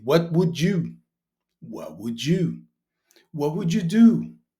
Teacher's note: They don't pronounce the t in what would.